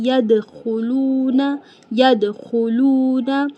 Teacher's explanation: دال قلقلہ لیٹرز میں سے ہے، دال پہ ہم دال کو ہلائیں گے